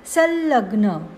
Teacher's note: अनुस्वाराचा उच्चार अनुनासिक ल होतो, कारण अनुस्वारानंतर ल आले आहे.